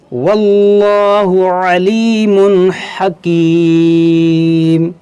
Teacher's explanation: یہاں پر دیکھیں اس میں جلالت سے پہلے زبر ہے تو اس کو موٹا کریں گے، یہاں تنوین کے بعد ہا ہے حرف حلقی تو یہاں پر اظہار کریں گے